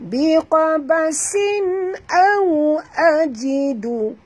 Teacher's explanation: muncungkan mulut sahabat, ya, kerana waw sifatnya lin